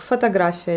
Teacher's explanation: En fait, aucun des deux n'est accentué, donc on le prononce plutôt comme les A. Et l'accent, il se porte sur la lettre A, la voyelle A